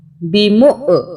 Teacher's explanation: یہاں پہ حمزہ کی وجہ سے ہم جھٹکے سے پڑھیں گے